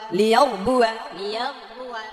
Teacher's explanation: র সাকিন ডাইনে জবর এজন্য এটা মোটা হবে